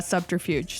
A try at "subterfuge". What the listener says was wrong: You pronounced the D in subterfuge. You said subterfuge.